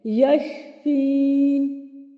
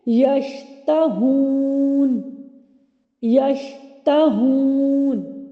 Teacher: شین کی ادائیگی میں آواز منہ کے اندر پھیل جاتی ہے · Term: تفشی